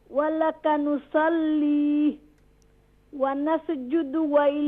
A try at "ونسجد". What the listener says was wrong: ونسجد. No, don't do qalqala on the scene. Control. ونسجد.